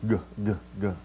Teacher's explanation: front hard part of our mouth but actually in Greek the it's farther back right it's that soft part the velum so it's more of a guttural than it is a palatal